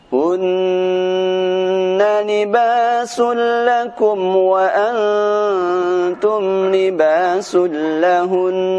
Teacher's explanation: Huruf nun ketika bertasydid maka dia akan dibaca dengan dengung. Ketika di akhir bacaan pun tetap harus dibaca dengan dengung.